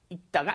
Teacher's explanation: There's no L sound. You just say 읽다가, as in when you just pronounce the basic form.